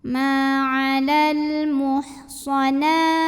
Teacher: Alif lamnya namanya alif lam qomariyah karena alif lam menghadapi huruf qomariyah yaitu mim. Maka lam dibaca dengan jelas.